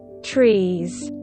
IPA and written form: triːz (Trees)